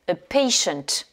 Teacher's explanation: Vous avez ici un T, le premier T qu'on prononce ch. Et après, le son choix, shunt.